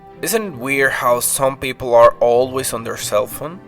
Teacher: we have a rising intonation at the end